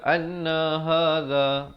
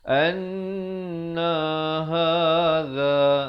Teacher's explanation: za di hujung lidah gitu